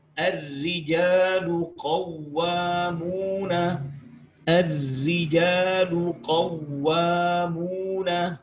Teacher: Sebagaimana contohnya pula ketika ra itu berharakat kasrah, meskipun diawali dengan fathah, maka ra itu hukumnya harus langsung tarqiq.